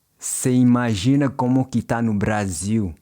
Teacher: In informal speech, você often gets shortened to se, and está usually gets shortened to tá.